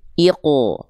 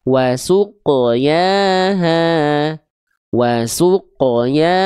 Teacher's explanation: Qaf nggak boleh tapi iqo, tebalkan, pangkal lidahnya diangkat. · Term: qaf sukun